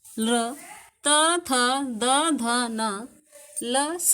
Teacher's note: ल, त, थ, द, ध, न, ल, स का उच्चारण स्थान दंत है